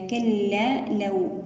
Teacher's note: الواو هنا لينة ساكنة قبلها مفتوح